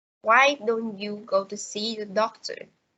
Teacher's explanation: the pitch goes up at the beginning and gradually down at the end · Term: questions functioning as suggestion